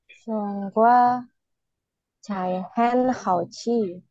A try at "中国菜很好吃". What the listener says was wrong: 很好吃, jangan ci. 吃,很好吃.